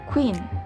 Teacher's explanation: Jadi konsonan ini disimbolkan dengan huruf K, dan konsonan ini tergolong dalam velar, plosive, dan juga voiceless sound.